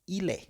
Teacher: Es la L en il combina con la E.